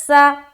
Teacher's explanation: تو سین کو باریک اور سیٹی کی طرح ادا کریں گے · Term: صفیریہ